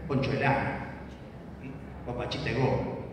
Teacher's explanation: caída de la D en la preposición